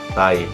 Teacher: Karena di suku kata kedua itu yang tai itu sudah memiliki termasuk semua ciri-cirinya, yaitu 2 gabungan vokal terus terdapat dalam satu suku kata yaitu tai dan diucapkan dalam satu hembusan suara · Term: diftong